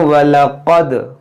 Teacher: قاف کو موٹا پڑھیں گے, دال میں قلقلہ کریں گے